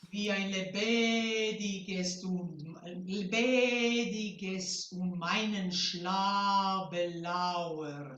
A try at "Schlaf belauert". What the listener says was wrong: I don't hear the F on Schlaf belauert. You can still keep the vowel a little longer if you want to, but just make sure. I still don't hear the.